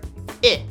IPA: ɪ